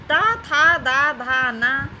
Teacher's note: इनका उच्चारण स्थान होता है दंत या दांत।